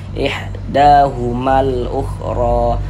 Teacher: Da juga dibaca panjang, mad tabi'i panjang 2 harokat. · Huruf ra memiliki harokat fathah. Maka huruf ra-nya dibaca tabkhim, dibaca tebal.